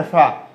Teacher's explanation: तो आपका नीचे का ओंठ ऊपर वाले दांतों में टच होता है